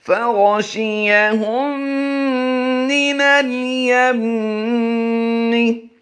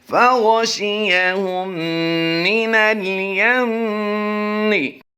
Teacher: دونوں میم مشدد میں ہم غنہ کر رہے ہیں، غنہ آنے والی آواز ہوگی